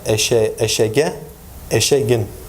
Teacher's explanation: So, in word final position, a voiceless velar stop is articulated as a voiced velar stop G in intervocalic position when preceded by a front vowel